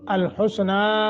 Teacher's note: حسنہ کو لمبا کریں گے چونکہ مد منفصل ہے